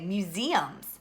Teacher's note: it's a little bit different because that's not our accented syllable it's actually the second syllable that has the long e sound and that's the accent